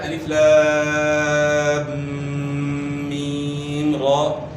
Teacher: میم میں جو ہے نا غنہ بھی کرنا ہے اور مد بھی ہوگا، اور را کو 1 الف کے برابر کھینچنا ہے